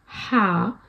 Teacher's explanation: तो ये जैसे आपके चेस्ट से आवाज़ आ रही होती है, आपका जो हलक है उसके बॉटम से आवाज़ आ रही होती है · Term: बॉटम ऑफ द थ्रोट